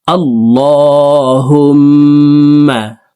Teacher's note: এলামকে মোটা করে অর্থাৎ ল বলে পড়তে হবে। কারণ আল্লাহ শব্দের আগের হরফে জবর অথবা পেশ হইলে এলামকে ল অর্থাৎ মোটা করিয়া পড়িতে হয়।